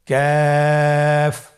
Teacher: কাফের মাখরাজ হলো জিহ্বার গোড়া থেকে একটু আগে বাড়িয়ে তার বরাবর উপরে তালের সঙ্গে লাগিয়ে উচ্চারিত হয়